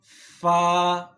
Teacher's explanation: ثنایا علیہ کا سرہ جب نیچے والے ہونٹ کے اندرونی حصے سے ٹچ ہوتا ہے تو یہاں سے فا ادا ہوتا ہے